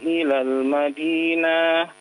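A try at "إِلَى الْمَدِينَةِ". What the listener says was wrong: Jangan dipanjangkan. Ilal Madinah.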